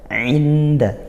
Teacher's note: Kemudian tidak juga idgham masuk langsung ke huruf dal, tapi masih samar di antara bunyi huruf nun dan juga ke makhrajnya huruf dal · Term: ikhfa haqiqi